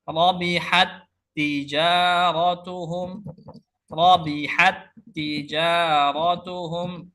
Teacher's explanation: Rabihat, rabihat ya, mengalirnya nafas ketika pengucapan huruf rabihat. Tapi ketika diidghamkan maka sifat hamsnya hilang ya. Seakan-akan kita baca satu tak saja.